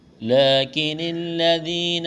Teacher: لیکن الذین، لام کے اوپر کڑا زبر ہے، ایک الف کے برابر کھینچنا ہے، کاف کو باریک کرنا ہے، نون کو لام کے ساتھ ملانا ہے